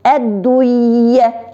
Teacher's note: Н хәрефен укымыйча, я хәрефен икеләтерик.